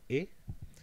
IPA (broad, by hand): ɪ